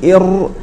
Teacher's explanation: من وسطه لان الراء كما سياتينا تتصف بالتكرار فحينما نقول ار راس اللسان يرتعد مع الحنك الاعلى · ففي الراء ينحرف الصوت بها من جانبي طرف اللسان الى وسطه يعني الصوت ياتي من جانبي طرف اللسان ليخرج من وسطه لان